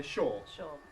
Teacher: We talked about the ʊə diphthong, and words like ‘sure’ ʃʊə becoming ʃɔː.